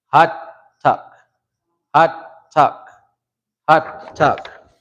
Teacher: say it low, come up, and then act like you're going back down.